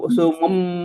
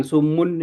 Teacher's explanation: karena mim di depannya ada ba itu harus dibaca sumum bukan sumun ya